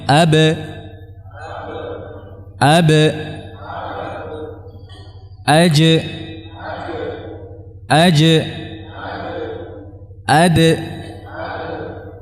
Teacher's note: dua sisi makhraj tanpa mengarahkan suara ke mana pun tidak ke fathah tidak ke dhamah tidak juga ke kasrah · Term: qalqalahnya